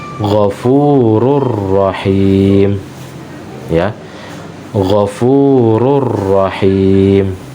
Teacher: tanwin dilebur ke huruf ra, maka sehingga huruf ra yang kedua ini bertasydid. Huruf ra yang kedua ini bertasydid. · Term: idgham bi ghairi gunnah